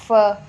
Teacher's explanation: अगर आप इसमें देखें लेबियो डेंटल देखें तो हमारी फ साउंड आती है। ऊपर वाले दांत देखें हमारे लिप्स के साथ लग रहे हैं, फ। लेबियो डेंटल इसलिए हम कहेंगे क्योंकि इसमें अगर आप देखें तो लिप्स जो हैं ना उनको हम लोग कहते हैं लेबियो।